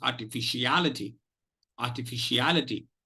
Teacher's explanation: Al will take the maximum energy, will take the maximum stress. So that is why it is called primary stress. R and fish will be secondary stress syllables.